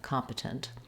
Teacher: I say both of these T's and I release them. I don't make a stop T, and I will use a little bit of a schwa or an I vowel there, competent.